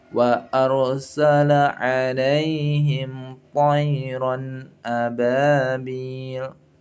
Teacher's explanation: Kita tebalkan ra sukunnya di sini. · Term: ra dibaca tafkhim